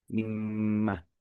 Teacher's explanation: ketika diidghamkan, digabungkan justru menjadi mimah pendek